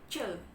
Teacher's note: Kemudian ada c. C itu adalah voiceless palatal affricate teman-teman.